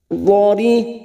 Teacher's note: Ada mat yang bertemu dengan huruf hidup dan dibaca waqaf, 4 harokat kita panjangkan. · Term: mat arid li sukun